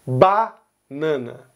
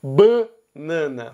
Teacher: E uma última coisa também sobre vogais aqui é na palavra banana, que se você notar, Rio Grande do Sul, São Paulo, Rio de Janeiro, Minas Gerais e Goiás pronunciam o primeiro A da palavra banana aberto